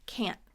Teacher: it has that K sound, k, and that nasally short A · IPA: /ˈkænt/